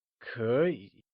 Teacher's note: note that curry is spoken in the second and third tone when together